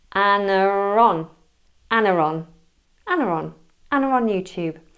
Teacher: you have an intrusive R between Anna and on. Anna-ron, Anna-ron, Anna-ron, Anna on YouTube.